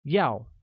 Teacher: Want translates to 要 and is pronounced with a falling tone